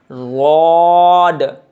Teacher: ضاد کا مخرج یہ ہے کہ زبان کا کروٹ کا حصہ اوپر کے داڑوں سے لگے گا اور پر کر کے نکلے گا